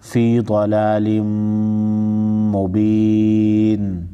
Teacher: मीम मुशद्दद पर गुन्ना होगा , ज़ाद को मोटा पढ़ेंगे, नून मुशद्दद पर भी गुन्ना होगा।